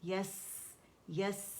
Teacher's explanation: سین میں جو سیٹی ہے وسلنگ ساؤنڈ ہے، اس کی صفیر اسے کہتے ہیں ، عربی میں صفیر، رخاوہ اور ہمس اس کا واضح کریں